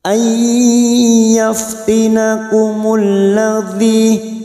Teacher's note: Nun sukun atau tanwin yang bertemu dengan 4 huruf ini, ya, nun, mim, waw, maka siap masuk dan mendengung, masuk ke huruf berikutnya yaitu huruf ya dan mendengung selama 2 atau 3 harokat. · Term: idgham bi gunnah